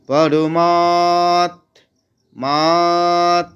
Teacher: মা এর আকারটাকে টেনে নিয়ে ত এর আঘাত নিচ্ছি